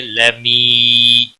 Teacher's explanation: खड़ी जबर है एक अलिफ के बराबर खींच कर पढ़ेंगे लमी या मद्दा है एक अलिफ के बराबर खींच कर पढ़ेंगे